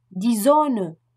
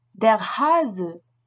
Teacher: En début de mot et entre deux voyelles, le S se prononce comme un Z français. Il s'agit d'un son sonore qui entraîne une vibration des cordes vocales.